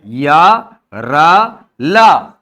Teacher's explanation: या तालव्य है, र मूर्धन्य है और ल जो है वो दंत्य होता है।